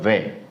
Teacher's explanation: जो वे होता है ये मात्र केवल दंतोष्ठ से बोला जाएगा